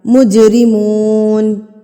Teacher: جیم ساکن ہے، تو ہم یہاں پر اس کو ہلا کے پڑھیں گے، یعنی کہ قلقلہ کر کے پڑھیں گے